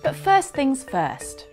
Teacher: The T on this first isn't said because it's followed by a consonant sound at the beginning of the next word, things. · the T is pronounced on this first because it's at the end of the sentence.